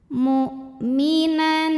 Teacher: Karena ada tanwin fathah menghadapi huruf halqi yaitu hamzah, maka tanwinnya dibaca masih bunyi asalnya, bunyi jelas N. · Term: izhar halqi, idhar halqi